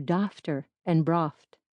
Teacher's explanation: A GH before T was pronounced like F, so daughter and brought were dafter and broft.